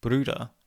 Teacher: with the r being pronounced as the english r and the rounded u being pronounced as the unrounded e bruda becomes more like breeder which of course is already a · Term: unrounding